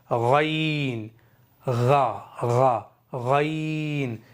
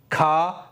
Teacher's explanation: غین اور خا آخیر حلق سے ادا ہوتے ہیں, یعنی اینڈ والے حلق سے, آخیر والے حلق سے.